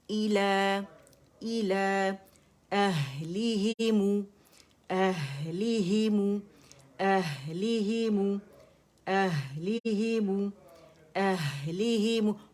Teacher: اوہلی نہیں پڑھیں گے حمزہ فتح ہے آواز چلنی چاہیے